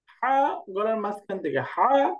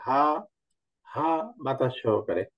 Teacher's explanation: একটা হলো হা, হা গলার মাঝখান থেকে হা, আর এটা হলো হা, হা বাতাস সহকারে